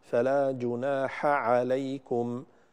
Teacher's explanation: في الميم عند الفاء أيضا لا بد من إظهارها